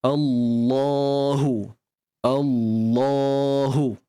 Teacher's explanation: Bunyi Allah tu ataupun lam tu yang kita tebalkan tu dibaca dengan 2 harakat. Cuma kita rasa confused sebab kita tak nampak alif mat tu. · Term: mat asli